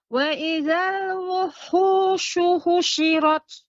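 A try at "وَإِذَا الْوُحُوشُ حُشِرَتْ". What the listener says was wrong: Ya, dia tidak ada hentakan wuhu. Nah, ini dia ada hentakan. Yang tepat wuhu.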